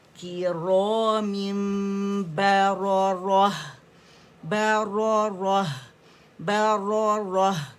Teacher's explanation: ٹھیک ہے کرام میم با کو گیلے حصوں سے ادا کریں کرام با پریس کر کے تاکہ پتہ چلے کہ میم اور با میں فرق ہے. با دونوں ہونٹوں کے گیلے سے